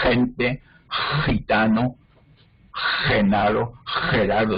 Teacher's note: la J del español del centro y norte de España no es velar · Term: J característica de los españoles